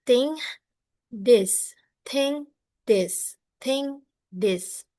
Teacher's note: Both are produced by placing the tongue between the teeth and forcing air through the gap. But the is also uses the vocal cords.